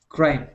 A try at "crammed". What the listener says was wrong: Yeah, and we want to end right on that D sound. Instead of crammed, it is crammed.